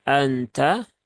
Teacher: Inna dengan Anta itu durasinya sama ya semua ditahan tiga harakat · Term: ikhfa Hakiki